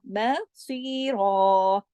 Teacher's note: سواد کو موٹا 2 حرکات کھینچ کر اور را 2 زبر رن کی، جب تنوین اس حالت میں آتی ہے کہ آگے ہم نے رکنا بھی ہوتا ہے تو ایک الف اور ایک زبر کی مدد سے پڑھا جاتا ہے، مصیرا۔